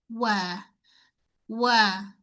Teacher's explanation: First sekali pada perkataan wama wama pada wau pastikan kita muncung dulu mulut dan tarik balik wa untuk wau semua keadaan boleh muncung mulut sebab makhrajnya memang kena muncungkan kedua bibir mulut